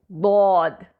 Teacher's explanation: दद के लिए जब जबान के किनारे दाढ से लगते हैं तो ऐसा दबाव यानी प्रेशर के साथ होता है